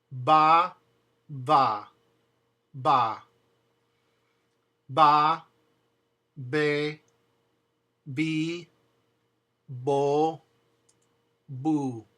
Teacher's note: The B pronounced in Spanish is a mixture of a B and a V. It's actually a double stop. You close as if you're going to say the letter V, like VV, as you all know, but then you're going to close your lips.